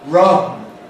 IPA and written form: rʌn (run)